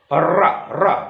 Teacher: उल्टी जिह्वा ठोकर मार रही है मूर्धा को।